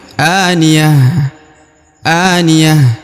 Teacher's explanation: huruf ta-nya berubah menjadi huruf H karena ayatnya diwakafkan di ujung ya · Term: ta marbutah